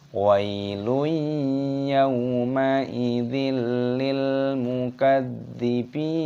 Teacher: Ya sukun dibaca wai, lui, dhammah tanwin bertemu dengan ya. Ini hukumnya dibaca idgham bi gunnah. Idgham itu artinya memasukkan bi gunnah disertai berdengung. Jadi dimasukkan, makanya ada tanda tasdid dan didengungkan.